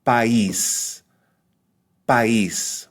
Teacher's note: a low high vowel combination, but the high vowel or weak vowel has a written accent. In other words, it is stressed.